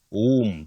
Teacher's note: Many people say womb, but that B after M is silent.